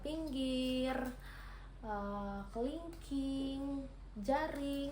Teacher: vokal I tinggi bawah depan dengan posisi mulut semi tertutup